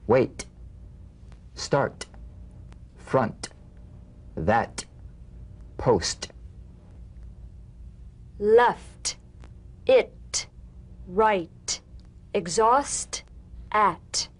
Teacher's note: unvoiced T tongue front palatal stop consonant cognate to the D the same staccato springing action as the D drumbeat with no voice forms the light tap of the T feel a gentle pulsation in the tongue now tap the drumbeat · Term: the unvoiced T